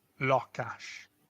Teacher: And again we emphasize that first syllable.